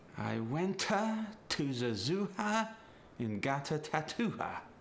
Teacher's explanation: it's very common for someone speaking with a Chinese accent to add an extra sound after vowels